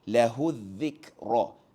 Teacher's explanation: huruf kaf tidak mempunyai sifat lantunan ataupun qalqalah